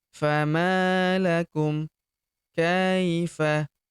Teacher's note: Huruf ma kita panjangkan dua harakat karena terdapat tanda alif di depannya yang ini. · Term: ayun sekali